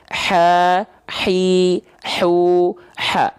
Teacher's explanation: Ha, hi, hu, ha. Mengalir udara dengan karakteristik berbisik. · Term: hak kecil